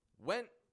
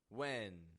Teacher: with the first one, the sound stops abruptly, my tone raises, and with the second, it fades away on the end sound.